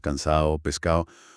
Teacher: La pérdida de la D entre vocales